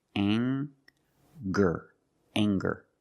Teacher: We have the nasal sound plus the hard G, the G sound.